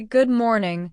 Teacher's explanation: when I say good morning, I say it with a rising sound at the end